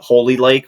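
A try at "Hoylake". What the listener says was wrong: Yeah, I think it's Holy Lake. I don't think it's Holy, but I believe like there's no L prior to the Y. Holy, you're saying Holy Lake. Hoyl.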